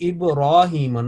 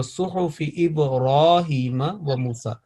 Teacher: And suhufi Ibrahim, not Ibrahima, Ibrahima on ra, there is a vertical fatha, fatha ishba'iyya, means elongated or stretched fatha, erected fatha, standing half alif.